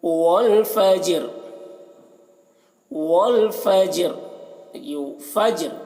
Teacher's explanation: جیم میں قلقلہ کریں گے